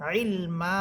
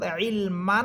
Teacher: ইলমান না পড়ে ইলমা বলে এক আলিফ টেনে পড়বেন।